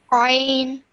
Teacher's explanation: Like I said, this one is a bit more difficult to pronounce because you have to pronounce it from the middle of your throat